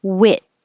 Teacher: this is a short duration because it ends with a voiceless sound and it's the e sound so your tongue is a little